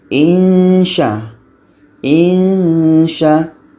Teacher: ketika sebut Nun kita sudah merasakan huruf Syah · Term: bunyi samar, nun mati sya